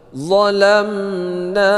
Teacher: mim bertemu dengan nun, yaitu dibaca idhar syafawi tidak berdengung